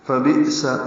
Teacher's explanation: فبئس حمزہ ساکن جھٹکے سے ادا ہوگا